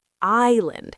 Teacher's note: People say Island because they see the S, but actually you say island. The S is completely invisible to your mouth.